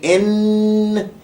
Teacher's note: it puts emphasis or pressure on the nasals on the nose area so when you say n you can hear that vibration in the nose